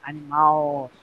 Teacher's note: é lá no final, tônico. Então ela é uma oxítona.